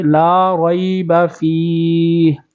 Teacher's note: لام کو ایک الف کھینچیں گے